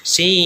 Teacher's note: kalau kita urai si ada bacaan panjang mad bertemu nun yang sukun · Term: mad lazim mutawal harfi